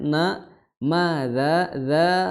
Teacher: dza itu empat atau lima harakat karena dzal ketemu dengan hamzah ya. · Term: mad jaiz